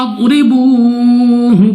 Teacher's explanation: ضاد پھر ہمارے پاس مستعلی میں سے ہے، موٹا یعنی منہ اور آواز کو کھول کر پڑھیں گے۔ را کے نیچے ہے زیر، را کو باریک پڑھیں گے۔ · را کے نیچے ہے زیر، را کو باریک پڑھیں گے۔ واو ساکن سے پہلے پیش، وہ مدہ 2 سیکنڈ تک کھینچ کر لمبا کر کے پڑھنا ہے